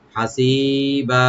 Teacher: আমরা শব্দে এখানে হাসিবা, হাটাকে ওপেন রাখবেন, আর সি একালে টানবেন, আর বাদে যে দুই জবর আছে তানবিন, এখানে যেহেতু আমরা থামতেছি, এখানে একালিফ টেনে আমরা থামবো, এখানে মধ্যে আওয়াজ হয়ে যাবে, এটা হাসিবা, এভাবে ইনশাআল্লাহ।